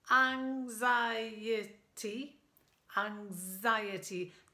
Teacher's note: The stress is on the I.